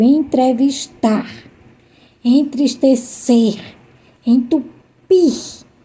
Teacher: são verbos que a sílaba mais forte a sílaba tônica é a última